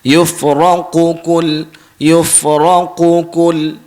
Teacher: kita kena tahu huruf qaf ni sebutan dia kita kena tebal. Kita mesti kena tebal dulu baru kita nipih.